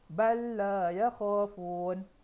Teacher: Lam yang pertama mati, lam yang kedua berbaris. Cara bacaan dia terus masukkan kepada huruf yang kedua